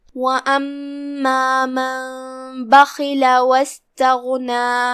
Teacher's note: फिर हर्फुल ग़ैन है, यहाँ ग़ैन हुरूफ तफ़ख़ीम में से है तो हम उसे भारी आवाज़ में अदा करेंगे।